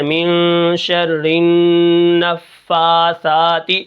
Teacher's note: جب نون کے اوپر تشدید ہوتی ہے تو وہاں پر غنہ ہوتا ہے، اور غنہ کی جو مقدار ہے وہ 1 الف کے برابر ہے، اور غنہ کا جو مطلب ہے وہ ہے ناک کے اندر آواز کو لے جانا، جیسے من شر النفاثات۔